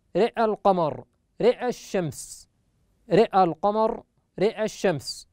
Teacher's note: في كلمة رأى القمر رأى الشمس عند الوصل يميل الراء فقط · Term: الإمالة